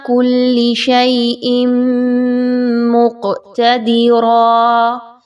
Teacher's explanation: تنوین، اس کے بعد میم آ رہی ہے، ادغام مع الغنہ، اچھے طریقے سے غنہ کرتے ہوئے پڑھیں گے۔